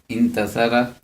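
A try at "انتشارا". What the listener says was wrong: شین ہے شین. शीन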